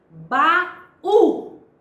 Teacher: Baú distingue-se nitidamente a presença do A e do U.